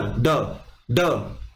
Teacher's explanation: ड का उच्चारण स्थान क्या है मुर्दा है और यह सघोष है क्या है सघोष है और यहां पे कम प्राण लगते हैं